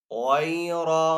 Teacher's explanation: را کو پر پڑھیں گے، را حروف مستعلیہ میں سے